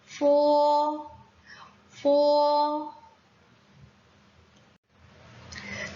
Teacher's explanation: 영어의 F처럼 윗니를 아랫입술에 살짝 댔다 떼면서 발음하면 돼요